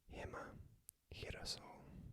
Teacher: like an H, but pronounced at the back of the throat